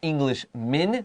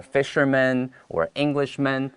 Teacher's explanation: That's M-A-N, but I say it with a short I.